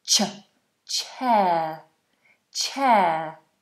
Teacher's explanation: And that ch is a ch sound, okay? Not a shh sound. So, we have a nice explosion of air.